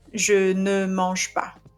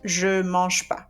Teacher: So when you have this negation, we usually skip the ne and we keep the pas